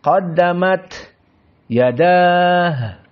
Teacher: Perlu diperhatikan juga qaddamat tak sakinah hukumnya apa? Hams.